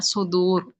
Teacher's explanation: اور را کو لاسٹ میں لا کے ہمیں موٹا کر کے چھوڑنا ہے